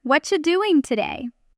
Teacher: At natural speed, you this often becomes something closer to watch doing today. The what are you collapsing into one quick sound.